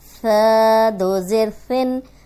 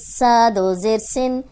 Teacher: ثا نرم حرف ہے، اس میں سیٹی کی آواز نہیں آنی چاہیے